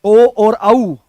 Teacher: ओ और औ इसका उच्चारण कंठ और ओष्ठ से होता है। इनको कंठ ओष्ठ कहा जाता है।